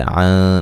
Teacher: عن نون ساکن کا یہاں باریک اخفا ہے